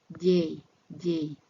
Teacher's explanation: The J sound needs tongue tip to be behind the lower teeth, and the main part of tongue need to touch the roof of the mouth, behind the hard ridge, and at the back of upper teeth.